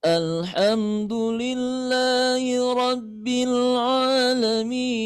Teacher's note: Naik dulu kemudian datar turun.